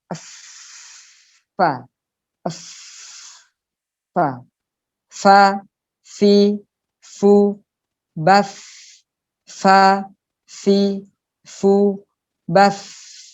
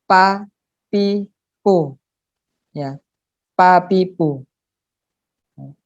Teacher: fa itu adalah perut bibir bawah di dalamnya, ya, di dalamnya perut bibir bawah dengan ujung gigi atas. Lihat di gambar, itu ujung gigi atas ke perut bibir bawah. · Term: Makhraj fa